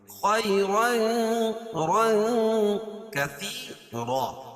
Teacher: تنوین کے بعد حروف اخفا کے 15 حرفوں میں سے کاف ہے تو یہاں ناک میں آواز کو چھپا کر پڑھیں گے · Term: اخفا حقیقی